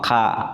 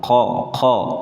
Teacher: Kaf sama qaf kan hampir sama tempat hurufnya. Cuma qa ini di ujung tenggorokan.